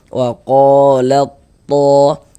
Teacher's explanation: Jadi huruf ta sukunnya ini kita masukkan ke huruf to, melebur ke huruf to, sehingga ini kita baca waqalat to. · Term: idgham mutajanisain shaghir